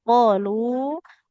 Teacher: Qafnya 2 harokat, lamnya minimal 4 harokat.